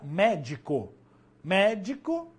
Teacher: proparoxítonas nas proparoxítonas e tem que ter no mínimo três sílabas sendo que a antepenúltima vai ser a mais forte